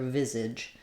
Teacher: So we have first syllable stress.